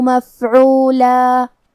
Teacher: ہم کلمت مفعولہ پہ رکیں گے تو اس پہ مد الف سے رکیں گے